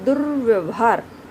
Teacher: आप इसका उच्चारण जब कर रहे हैं तो र की ध्वनि कहाँ आ रही है? द के बिल्कुल बाद में र की ध्वनि आ रही है